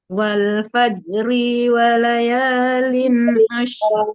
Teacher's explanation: ri-nya jangan tertahan, soalnya ri-nya nggak panjang ya